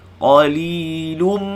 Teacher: idgham ma'al gunnah, panjangkan dengung pada huruf mim